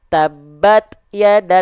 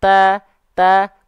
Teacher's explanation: sifat perecikan nafas pada huruf ta itu akan lebih terdengar jelas ketika dia dalam kondisi Sukun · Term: percikan nafas